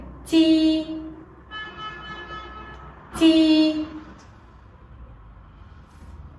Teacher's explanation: Đây là một âm mặt lưỡi không bật hơi tắc sát và khi phát âm mặt lưỡi áp sát vào ngạc cứng đầu lưỡi hạ xuống. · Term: âm “j”